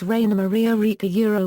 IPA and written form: ˈʁaɪnɐ maˈʁiːa ˈʁɪlkə (Rainer Maria Rilke)